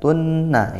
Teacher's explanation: Sedangkan amilatun, sedangkan tunna ini idgham bi gunnah, tanwin bertemu nun ya, dibaca masuk dengung